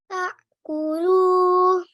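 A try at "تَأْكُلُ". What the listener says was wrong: Almost perfect. The jerking sound, it doesn't have to be very strong. Ta'kulu.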